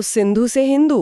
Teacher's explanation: उनकी भाषा की एक विशिष्ट ध्वन्यात्मक प्रकृति थी। वे 'स' ध्वनि का उच्चारण नहीं कर पाते थे। इसके बजाय, वे 'ह' कहेंगे।